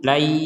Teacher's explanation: nun sukun ini ketika disambung dengan Ya sudah tidak terbaca dengan jelas lagi tapi dimasukkan kepada huruf ya jangan lupa disertai dengungan la jadi di rongga hidung kita itu